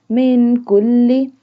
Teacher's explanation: کاف کو زبان کی جڑ اور تالو کے سخت حصے سے ادا کریں گے اور نرمی سے پڑھیں گے۔